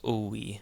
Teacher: When it's surrounded by vowels, like in this case, when you have the short O, the epsilon, and the iota, then the epsilon takes a W type sound, and this becomes owe, in this case.